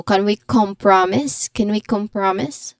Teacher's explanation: the stress is on the first syllable of, compromise. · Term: stressed syllable